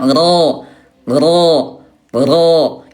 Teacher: Inhiraf suaranya condong ke dalam